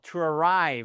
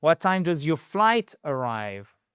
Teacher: The stress is on the second syllable. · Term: accent tonique